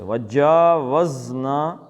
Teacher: زے یہ سیٹی کی آواز نکلتی ہے منہ سے